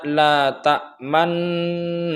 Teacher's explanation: Jadi la ta'man dengung, kemudian moncong sedikit ke depan, kemudian dengung lagi, kemudian baca na. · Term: ismam